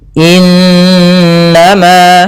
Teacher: Cara membacanya, suara n-nya ditahan 2 harokat. Innama, baru dilepas. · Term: gunnah